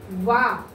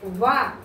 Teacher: దంతోష్ట్యము అంటే దంతాల నుంచి, ఓష్ట్యాల నుంచి పుట్టుకొచ్చిన అక్షరము అని అర్థం.